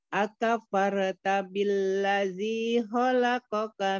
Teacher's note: akafarta ini ro-nya tebel karena sebelumnya fathah